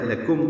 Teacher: لکم کاف باریک میم ساکن پہ اظہار شفوی ہے